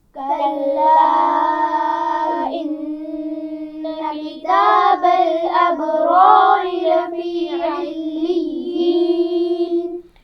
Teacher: اس میں دو را ہے، پہلی را موٹی پڑھی جائے گی اور دوسری باریک پڑھی جائے گی